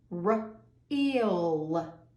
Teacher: If you see in the middle, we have 2 vowels, E and A. We don't hear the A, we hear the long E